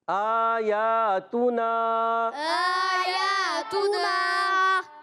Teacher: حمزہ پر کھڑا زبر ہے، یا پر بھی کھڑا زبر ہے، تو ان دونوں کو ایک ایک الف کھینچیں گے